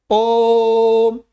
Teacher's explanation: इनमें 3 मात्रा काल लगता है। ओम, लंबी ध्वनि हो गई ना, 3 मात्रा काल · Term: प्लुत स्वर